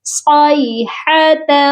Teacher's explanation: الا، نیکسٹ آپ دیکھیں صاد کے ساتھ یائے لین ہے، کیونکہ یا ساکن سے پہلے جب زبر ہوتا ہے تو وہ یائے لین کہلاتی ہے۔ یہاں پر ہم نے یا کو لمبا کر کے نہیں پڑھنا، بلکہ ہم نے اس کو نرمی سے پڑھنا ہے